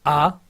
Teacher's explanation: ऐसे स्वर जिनका उच्चारण करने में मुख का पूरा द्वार खुलता है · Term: विवृत